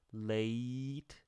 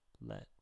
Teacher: late is a little farther forward than let